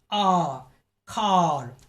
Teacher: the body of the tongue is lowered and is as far as from the roof of the mouth the jaw drops a lot and the mouth is open big and wide the jaw drop level is three that is the Open Jaw